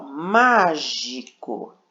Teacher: Então, ó, última sílaba da palavra, penúltima sílaba, antepenúltima. Então, a sílaba acentuada, a sílaba forte, é a antepenúltima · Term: sílaba tônica